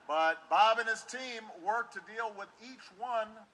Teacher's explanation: Within a phrase, he leaves off the T